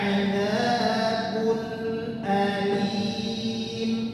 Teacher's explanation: izhar itu bukan tanpa gunnah. Ada gunnahnya tapi singkat.